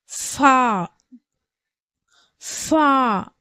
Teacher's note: ஓரம் கீழ் உதட்டின் உட்பகுதியை தொடும் பொழுது ஃபா உடைய உச்சரிப்பு பிறக்கப்படுகிறது அதாவது நம்மளுடைய மேல் வரிசை பற்கள் வந்து பற்கள் வந்து கீழ் உதட்டில் உள்பகுதி இருக்கு இல்லையா அந்த இடத்துல படும்பொழுது ஃபா உடைய சப்தம் வந்து பிறக்கப்படுகிறது